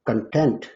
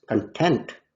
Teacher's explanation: If the first syllable of the word content is stressed, it means something to do with material. But if the second syllable is stressed, content, the word means satisfied.